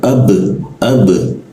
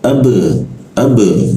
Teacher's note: Nah, perhatikan ada huruf ba mati. Ketika ada huruf ba dimatikan, maka hurufnya akan dipantulkan suaranya. Jadinya ab dikasih e ya.